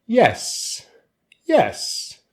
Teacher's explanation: we use the rising intonation pattern